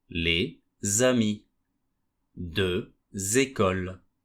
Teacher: The S or X at the end of the first word will turn into a Z sound. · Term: liaison